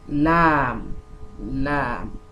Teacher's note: So this lam is to be prolonged for 6 vowel counts, because it is to be prolonged with 6 vowel counts, and it is going to be mukhaffaf because the meme that ends the spelling of lam is not merged with ra.